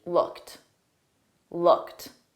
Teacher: the e d on looked is pronounced as a soft T